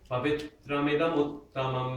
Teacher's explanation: There's a tendency to pause after pavitram, but there's no pause there. It's a short syllable.